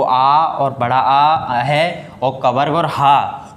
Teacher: जो कंठ से बोले जाते हैं, हमारे कंठ से गले से बोले जाते हैं